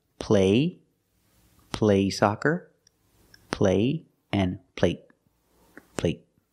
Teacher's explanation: They're the same vowel, they're the long A. But the stop T at the end makes the long A a little shorter.